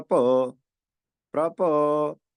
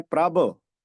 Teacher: ਕਰਦਾ ਪ੍ਰਭ ਭੋ ਇਦਾਂ ਨਹੀਂ ਬੋਲਦੇ ਆਪਾਂ ਬੋਲਦੇ ਹਾਂ ਪ੍ਰਭ ਤਾਂ ਲਿਖਦੇ ਹਾਂ ਭਬ ਨਾਲ ਬੋਲਦੇ ਹਾਂ ਬਬ ਨਾਲ